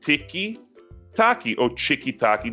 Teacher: that so distinctive Brazilian habit of adding a syllable, usually an E sound, to the end of words, and sometimes changing the consonant as well.